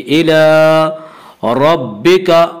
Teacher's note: رَبِّكَ کی را کو پر پڑھا جائے گا